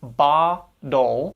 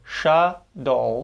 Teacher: So therefore, because we have those T's between and ul, in the case of ba-dol, and between and ul for sh-dol, we tap or flap that T sound via fast, soft D